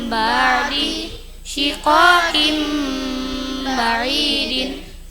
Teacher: Apa yang dimaksud iqlab? Nun sukun atau tanwin bertemu ba dengung bacanya.